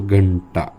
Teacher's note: ट च्या गटातला अनुनासिक न आहे म्हणून या अनुस्वाराचा आवाज न असा होतो